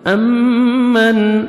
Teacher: نون ساکن کے بعد حروف حلقی میں سے ہا ہے، یہاں پہ آپ نے اظہار کرنا ہے، جلدی پڑھیں گے